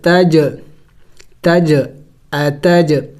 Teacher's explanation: دیکھیں میں نے قلقلہ کیا، جیم حروف قلقلہ میں سے ہے اور ساکن ہے تو قلقلہ کریں گے